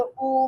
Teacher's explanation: तो long vowel nearly close है, back of the tongue इसमें रेज होती है, और क्लोज लिप राउंडिंग।